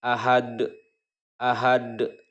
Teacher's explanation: Nah ini dalnya itu awalnya berharokat domatain, karena berhenti atau wakof maka dal tersebut disukunkan. Maka membacanya itu adalah qalqalah kubro, dipantulkan, pantulannya pantulan besar.